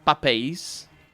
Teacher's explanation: there's a lot of sibilation for the pluralization in Brazilian Portuguese. Yeah, and in Portuguese, papéis, we say the S.